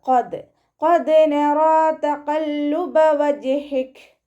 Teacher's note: ഖാഫ് ഇസ്തിഅലാന്റെ ലെറ്ററാണ്, ഉയർത്തിയിട്ട് ഉച്ചരിക്കുക കേട്ടോ.